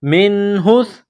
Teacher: نون ساکن کے بعد ہا ہے، حروف حلقی ہے، تو یہاں غنہ نہیں کریں گے نون ساکن پر